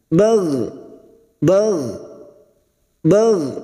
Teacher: huruf Gin sukun hati-hati memantul ya bukan Qalqalah jangan sampai dipantulkan